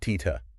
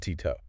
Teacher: for a retroflex T, the tongue physically curls back. It touches the hard palate, the roof of the mouth, much further behind the teeth. · I can feel the difference in resonance in my own head. The retroflex feels almost like a drum beat in the mouth. It's punchy. It is percussive, very percussive.